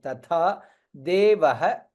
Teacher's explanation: था दीर्घ एंड महाप्राण